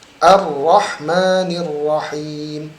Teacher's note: Tekankan huruf ra-nya. Ar-Rahman tidak terlalu banyak getaran juga ya.